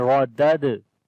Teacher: This dal is in blue color like the second dal. So this dal has a sukun sign on it, we make qalqala, as again this is weak qalqala